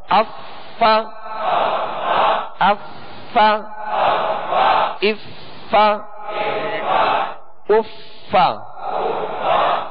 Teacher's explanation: اوپر کے دانتوں کے کنارے اور نچلے ہونٹ کا تر حصہ، یہ مخرج ہے فا کا